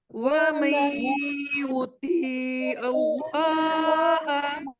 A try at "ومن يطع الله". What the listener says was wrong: यहाँ पर कोई भी लफ्ज आप स्ट्रेच नहीं करेंगी, सब लफ्ज जल्दी यहाँ पर युतिउल्लाह में पढ़ा जाएगा सवाए लाम के।